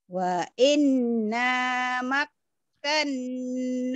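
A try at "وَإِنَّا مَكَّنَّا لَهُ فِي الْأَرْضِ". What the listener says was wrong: Nggak ada wa inna, mana inna? Nggak ada wa inna, inna.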